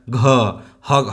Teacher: generally आप पढ़ के भी देखेंगे तो आपको फील होगा, क फट से बोला जा रहा है ना, ख बोलने में थोड़ा जोर लग रहा है, ग फट से बोला जा रहा है, घ हकार का भी उच्चारण रहा है, तो इसको बोलने में जोर लग रहा है